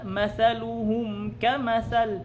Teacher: Babasahin natin yung mim idharan. Ito ay malinaw nang walang idgham o walang ikhfa. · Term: al-idharu asyafawi